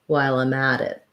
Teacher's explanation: So lime at, and then we link the at to the it, and this T changes to a flap, which is more like a D sound